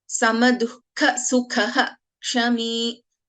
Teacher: we pronounce the complete Visarga when there is Ksha after Visarga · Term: full Visarga